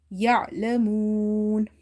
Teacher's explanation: Ain is from the middle of the throat.